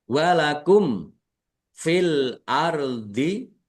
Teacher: Mim sukun bertemu dengan huruf fa. Bacaan izhar syafawi dibaca jelas.